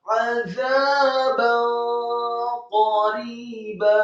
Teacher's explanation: Dalam hal ini adalah ba yang harokatnya fathah tanwin bertemu dengan huruf qaf, dibaca samar-samar. · Kata qariba, qafnya tebal, taukhim, fathah 1 harokat, kemudian rohnya dibaca tipis, kasrah 2 harokat karena setelahnya ada ya sukun, kemudian baknya dibaca fathah 2 harokat karena kita akan berhenti di waqaf yang pertama pada surat An-Naba ayat yang ke-40. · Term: ikhfa